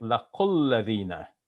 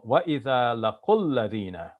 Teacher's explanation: In Arabic, what we do is we join the laqu with alladhina. So we're going to make it laqulladhina, even though it is marked with a bar, which means it's a long sound.